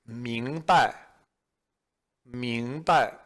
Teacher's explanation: you'll notice that the second syllable is a neutral tone